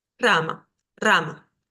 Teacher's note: al inicio de una palabra es un sonido de r un poquito más fuerte sin exagerar